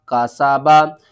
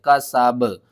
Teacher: وقف کی صورت میں با کے اوپر جو زبر ہے اس کو آپ نے ختم کرنا ہے، سین کو با کے ساتھ ملا دینا ہے۔